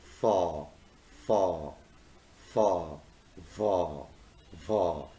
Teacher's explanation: They originate when there is a friction between the lower lip and upper teeth. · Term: labiodental sounds